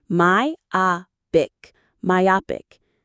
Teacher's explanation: The stress is on the O, myopic.